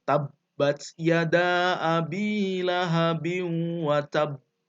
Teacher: Ada jeda ketika membaca Qalqalah pada akhir ayat tadi yang bertasydid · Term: Qalqalah Akbar